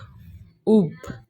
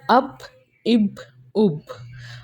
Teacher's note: جب آپ با کو نکالتے ہیں تو اپنے دونوں ہونٹ ملاتے ہیں، ٹھیک ہے؟ تو ویسے ہی جب آپ نے اب، اب، اب، آپ نے دونوں ہونٹ کو ملانا ہے، ٹھیک ہے؟